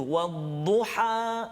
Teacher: Dia dekat tengah ni. Ha dekat tengah halqum kita. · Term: huruf ha pedas